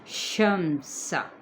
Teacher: یہ تفشی لیٹر ہے شین، یہ حروف شجریہ میں سے بھی ہے